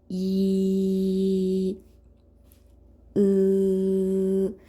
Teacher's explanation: 길게 발음해도 처음 발음했을 때 입술이나 혀의 모양이 끝까지 지속되는 모음이에요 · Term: 단모음